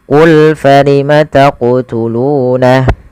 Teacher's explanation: ketika melafalkan huruf q di sini harus memantul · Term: Qalqalah